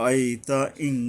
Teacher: ইন নয় ইং অনুস্বারযোগে পড়তে হবে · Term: ইকফা